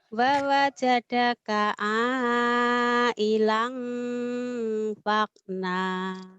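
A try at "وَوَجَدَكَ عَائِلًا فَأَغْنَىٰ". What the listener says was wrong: A-nya ketinggalan, lagi, Pak Agna, A-nya ketinggalan ternangis dia sendirian. Aku nggak dibawa katanya, kata Hamzah Alif ini. Wa wajadaka ailan fa'aghna.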